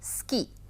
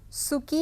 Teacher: सुकी नहीं कहा जाता है, बहुत ज़्यादा, बहुत हल्का सा ऊ का उच्चारण किया जाता है